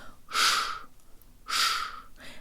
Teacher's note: Let's start with the stressed syllable. Sha is pronounced with the tip of the tongue curved upward, but with the rest of the tongue low, making lots of space in the mouth